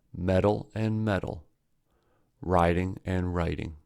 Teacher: Flap T happens when T or D is placed between two vowels and the second vowel is unstressed, as in butter, writing, wedding, loader. Due to the flap T, in America, these pairs are homophones, that is, they are pronounced the same.